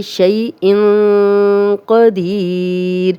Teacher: زبر آ گئی ہے شین پہ تو یہ یا لین ہے، نرمی سے بغیر کھینچے پڑھیں گے